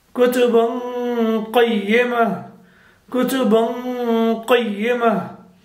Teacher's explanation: Qaf is a heavy letter, so the Ghunna will also be heavy. The Ikhfa will be also heavy.